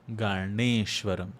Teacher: N is by rolling the tongue backwards and flicking it forwards by supporting taking support against the roof of the mouth the pallet the middle section.